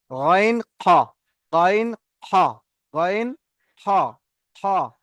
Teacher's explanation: 3 number মাখরাজ কণ্ঠনালীর শেষ এখান থেকে গইন খ, গইন খ, গইন খ, খ।